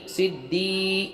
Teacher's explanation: سواد دال زیر سد دال یا زیر دی صدی یہاں پر یا ساکن سے پہلے زیر ہے یا مدہ ہوا ایک الف کے برابر کھینچ کے پڑھیں گے